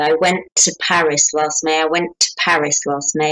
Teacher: We actually kind of make a long T.